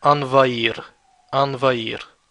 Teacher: Notice how I didn't pronounce the H. It's a mute H.